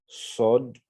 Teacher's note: Le bout de la langue reste dans la partie inférieure et puis le reste de la langue va monter vers le palais. Sod, sod. Donc, il y a un sifflement avant également.